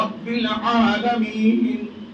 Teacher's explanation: یہ بیچ والے حلق سے عین ادا کیا